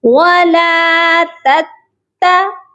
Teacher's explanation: دوسری تا جو ہے مشدد کے ساتھ اس پر حرکت ہے، تو دوسری تا کو سختی سے پڑھا جائے گا